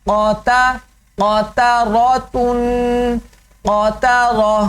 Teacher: اس میں بھی 2 موٹے حروف ہیں، قاف اور را، تو کوشش کرنی ہے یہ دونوں موٹے ہوں لیکن درمیان میں تا موٹا نہ ہو